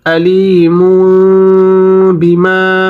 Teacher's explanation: নুন সাকিন বা তানভীনের পরে ইকলাবের একটি হরফ বা যদি আসে তখন সেটাকে গুণ না করে মিম দ্বারা পরিবর্তন করিয়া পড়তে হয় যেমন আলিমু বিমা এই গুন্নাটি করার সময় দুই ঠোঁটের মাঝখানে একটু